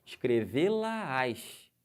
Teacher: monossílabo átono é fraquinho não tem acento já essa aqui é monossílabo tônico você fala com mais força